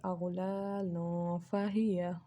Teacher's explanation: I am not creating the n sound of noon here, rather I am creating the nasal sound of it, because the letter of ikhfa is present, which is followed by tanween here, and by doing this I am followed the rule of concealment or ikhfa. · So in this rule, I have to conceal the sound of noon sakin or tanween, and we don't have to produce the n sound of noon. Rather, we have to make the nasal sound here.